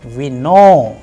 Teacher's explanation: the end of the word which is having this vowel o is rising